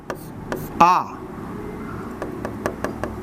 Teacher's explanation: तो इस हिसाब से ये संस्कृत का तीसरा स्वर है जो प्लुत। इसका जो उच्चारण का समय है दीर्घ स्वर से और 1.5 गुना लगता है। यानी ह्रस्व स्वर 2 मिल जाए तो दीर्घ हो जाते हैं और ह्रस्व स्वर 3 गुना टाइम ले तो प्लुत हो जाते हैं।